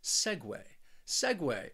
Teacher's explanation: this word also has two syllables and the stress is on that first syllable